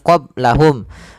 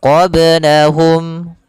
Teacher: Jangan pula dibaca dengan tambahan hamzah qablahum. Itu bacaan yang kurang tepat. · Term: qalqalah